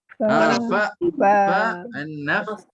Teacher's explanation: Ada nafas terusan dan suara berterusan. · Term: Hams dan rakhawah